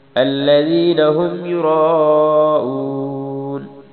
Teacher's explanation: یرا پہ مد کرنی ہے، را کو موٹا پڑھنا ہے